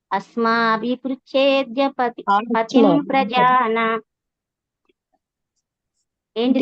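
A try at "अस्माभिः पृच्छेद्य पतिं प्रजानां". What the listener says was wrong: ఆ దీర్ఘం ఉంది మాతాజీ. తీర్ణర్ణ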